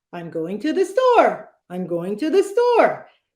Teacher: it sounds like almost like you're asking a question. It's kind of that sing-songy way. We don't want to do that.